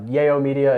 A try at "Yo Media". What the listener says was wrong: Dude, it's actually, everyone says either Yayo or Yao. Okay, it is pronounced Yo Media, okay, like Yo what's up, yeah.